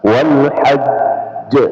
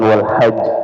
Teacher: jim adalah huruf qalqalah dan dia berada pada akhir ya kita mensukunkan dan dia bertasydid. Nah, maka dia lebih di ditekankan wal hajj.